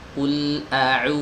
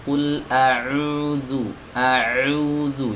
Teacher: Enggak ada lagi unsur huruf ainnya saat kita mengucapkan domah panjang.